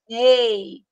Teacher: Ei, sai pela boca. Então, não é decrescente nasal, é oral.